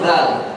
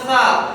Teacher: huruf yang diucapkan sambil menggetarkan pita suara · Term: jahr